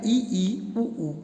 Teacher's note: संवृत means होता है close, यानी मुख आपका पूरा बंद है, आप फिर भी बोलेंगे। ऐसे स्वर जिनके उच्चारण के समय मुख विवर लगभग बंद रहता है उसे कहते हैं संवृत, यानी क्लोज।